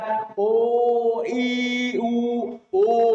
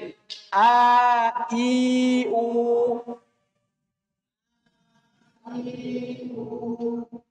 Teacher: ketika kita baca U, ada moyongnya sedikit karena dia ada dhammah. Tapi ketika A dan I nggak ada moyongnya.